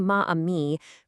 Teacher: Saying ma amie creates a really harsh vowel clash, the a of ma abruptly hitting the a of amie. It kind of forces you to halt your breath, and French is a language that completely prioritizes a smooth pronunciation bridge, what they call liaison.